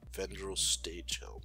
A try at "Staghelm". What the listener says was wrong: Yeah, and it's Staghelm. Staghelm. Not stage helm.